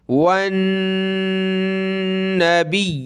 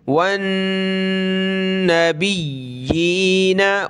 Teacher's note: खड़ी ज़ेर नीचे है तो एक अलिफ की लिमिट में नीचे खींचेंगे और यहाँ पर ये तशदीद है तो या को हमने सख्त करना है।